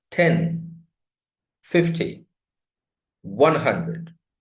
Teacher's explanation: if there are many numbers, the multiple of 10, the stress placed on the first syllable.